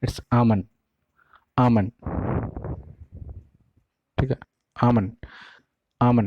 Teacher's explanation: इसको एलमंड पढ़ने की कोई ज़रूरत नहीं है, इसके एल को पूरा साइलेंट कर दो